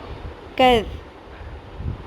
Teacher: ذال نرمی سے پڑھنا ہے، زبان کو تھوڑا سا باہر نکالتے ہوئے